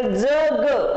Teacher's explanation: जग असं म्हणताना आपली तोंडामधील जीभ दाताच्या टोकाला टेकते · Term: दंत तालव्य